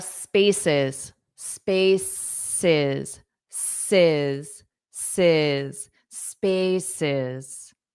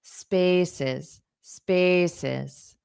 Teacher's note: So the syllable stress on the first syllable